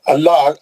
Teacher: اللہ پہ لام جلالہ ہے. جہاں لام جلالہ دو قسم کا رہتا، پتلا پڑھنا ہے، موٹا پڑھنا ہے. یہ موٹا پڑھنا ہے. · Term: لام جلالہ موٹا